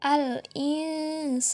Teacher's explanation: Yang keempat adalah ikhfa, karena nun sukun bertemu dengan sin, maka adalah ikhfa. Jadi kita membacanya samar-samar.